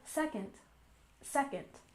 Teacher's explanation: And second, we stress the first syllable